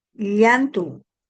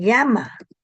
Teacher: La doble L eh es un sonido palatal